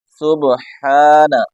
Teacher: ہا کو حلق سے نکالیں گے